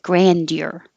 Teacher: or you can make a d y combination grandeur deer or get rid of the d and just use a y